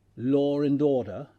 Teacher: The phenomenon of intrusion or the intrusive R is confined to the non-rhotic varieties of English. Here, the phoneme R is inserted between two vowels even if it is not represented orthographically. The condition is the final vowel of the first item must be a low back or a central vowel, and the next word must start with a vowel.